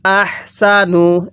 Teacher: তাহলে আমরা এখানে ওয়াকফু করব কিভাবে পড়ব এরপরে ওয়ামান আহসানু দেখুন এই নুন সাকিনটা কিন্তু স্পষ্ট করে পড়তে হবে কারণ নুন সাকিনের পরে হামজাটি হলো ইজহারে হরফ